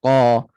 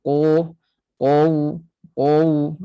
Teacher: Dia tinggi, pangkal lidah naik. Tetapi dia infitah. Tengah lidah tak naik. Keliling lidah terletak. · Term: isti'la yang infitah